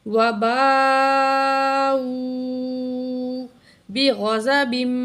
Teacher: وباء بڑی مد ہے یہاں الف کے اوپر. اس کو 4 الف کی مقدار کھینچ کے پڑھیں گے · غین اور زواد دونوں کو موٹا کر کے پڑھیں گے